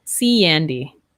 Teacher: Here we have E to A. Here, I would link with the Y sound, see Andy. That yeah, when we have an E and an A sound, yeah, so we link with the Y.